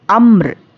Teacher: अमरिन, अब यहाँ पर आयत है ना तो जज़म देंगे तो क्या होगा, ये रॉय साकिना, रॉय साकिना से पहले यहाँ पर भी साकिन है और रॉय साकिना से पहले यहाँ पे ज़बर आएगा तो रॉय साकिना को हम पुर पढ़ेंगे।